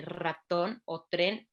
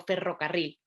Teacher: Necesitamos tener la apertura mandibular a una apertura media, pero además elevar la lengua, pero además disociar la lengua porque los laterales se tienen que quedar pegados hacia los molares para no dejar la salida del aire y permitir el escape del aire únicamente por el centro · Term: R vibrante